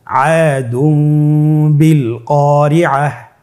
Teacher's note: তানবিনকে মিম দ্বারা পরিবর্তন করে গুন্নার সহিত পড়ব।